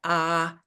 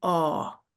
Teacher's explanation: a is wide open and a your lips are rounded and your tongue is pulled farther back